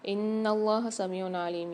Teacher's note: ان اللہ سمیع علیم، یہاں پر نون پر مشدد ہے، غنہ کر کے پڑھیں گے اور اللہ کے لام کو موٹا پڑھیں گے اور کھینچ کے پڑھیں گے